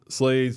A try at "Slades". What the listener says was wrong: Slades, not slates. Yeah, with a D.